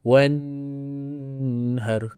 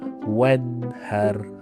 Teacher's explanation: Maksud dekat sini kena jelaskan nun tanah dengung. Jadi cara baca dia mesti kena jelas jangan dengung. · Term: izhar halk